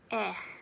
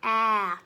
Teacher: it's a little bit shorter than the a pronunciation the shape of your mouth does not open as much compared to saying a short a sound